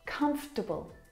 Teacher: this word, just like vegetable, has an extra vowel in there that we don't need to pronounce